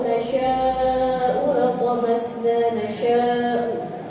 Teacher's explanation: Itu ada mad wajib muttasil. Ya, panjangnya 4 sampai 5.